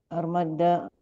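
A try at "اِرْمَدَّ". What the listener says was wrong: Ir, bukan ar. Ir. Bukan. Irmada yarmadu. kalau kita mad yang ujungnya bertasdid itu fathah ujungnya. Irmadda, yarmad, irmadda, latar madda.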